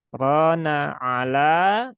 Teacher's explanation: Nah, jadi bedakan suaranya antara ro yang tebal dengan yang tipis. Dan ini dibaca tebal karena ro-nya berbaris fathah. · ro-nya dia berbaris fathah dan ada alif, maka ro-nya terbaca dengan tebal. Jadi bukan ro, tetapi ro ya. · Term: ro tebal, Ro tebal